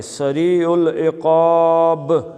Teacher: اب با پہ رکیں گے، حالانکہ یہاں پہ زیر ہے لیکن جب عارضی طور پہ رکیں گے تو با کا کیا کریں گے؟ قلقلہ کریں گے